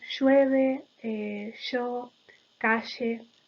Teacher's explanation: segmento fricativo prepalatal, sonoro y estridente, con un gran ruido. La fricción está muy marcada · lo realizan como la fricativa palatal sonora, aunque ya cada vez está más extendida la pronunciación sorda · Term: yeísmo